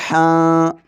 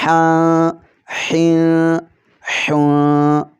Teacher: حلق کے درمیان والے حصے سے ادا کرنا ہے۔ حا دو زبر حاں، حا دو زیر حیں، حا دو پیش حوں، حاں حیں حوں۔